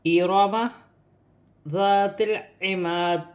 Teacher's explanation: تا کو لام کے ساتھ ملا کر پڑھا جائے گا اور یہاں الف مدہ ہے، اسے 1 الف کی مقدار کھینچ کر پڑھا جائے گا۔ · یہاں را جو ہے موٹا پڑ جائے گا، را پر زبر ہے